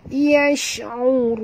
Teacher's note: Kita berhenti dengan ma'aril sukun dan pastikan ra' ini ditebalkan.